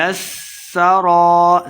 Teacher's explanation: ساکن ہے تو خوب واضح کر کے پڑھیں گے، تبلی السرائر، سین پہ سیٹی کی آواز آئے گی · تب با حروف قلقلہ سے ہے، ساکن ہے تو خوب واضح کر کے پڑھیں گے